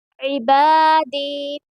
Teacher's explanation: عین کو درمیان حلق سے ادا کریں گے اور الف مدہ ہوگا کیونکہ الف سے پہلے با کے اوپر زبر ہے، اس لیے یہاں پر الف مدہ ہوگا، اور اس لیے با کو تھوڑا کھینچ کر پڑھیں گے۔